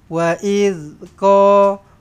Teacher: kalau kasar-kasar sangat nanti dia jadi huruf zai ha dia lembut aje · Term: zal